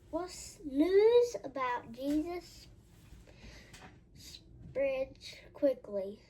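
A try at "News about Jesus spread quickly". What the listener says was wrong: There's no S on spread.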